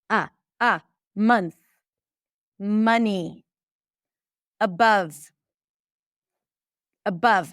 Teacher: So it sounds just like a short neutral a sound. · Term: cup sound